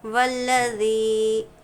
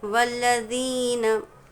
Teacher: या मद्दा है, या मद्दा को खींचेंगे, साथ ही में ज़बान की नोक, जब ये ज़ाल अदा करेंगे, ज़ी कहेंगे तो ज़बान की नोक को दोनों दांतों के दरमियान रखें। अगर कोई सामने बैठे हो तो हल्की सी हमारी ज़बान की नोक बाहर नज़र आना चाहिए।